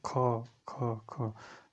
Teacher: आपकी कंठ से इसका उच्चारण आता है